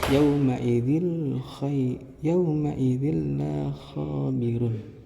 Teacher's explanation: cara membaca idgham bila gunnah yaitu dengan memasukkan suara nun sukun atau tanwin sepenuhnya ke huruf lam dan ra. Nah, tanpa disertai dengan dengung.